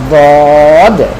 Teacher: মনে রাখবেন যে দদের উচ্চারণের ক্ষেত্রে যেন আপনার জিহ্বার আগাটা দাঁতে না লাগে, সামনের দাঁতে, জিহ্বার পার্শ্বটা লাগবে দাঁতে। জিহ্বার পার্শ্ব এবং মাড়ির দাঁতের গোড়ার সাথে আপনি লাগিয়ে বলবেন দদ। যদি দূর থেকে কেউ শুনে তো কেউ হয়তো ধারণা করবে এটা জ বলতেছে, কেউ ধারণা করবে দ বলতেছে।